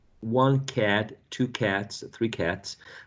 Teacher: the final sound t is voiceless. Therefore, we used a voiceless s. Voiceless, voiceless.